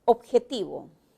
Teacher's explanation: La característica que predomina en la O es una vocal posterior media.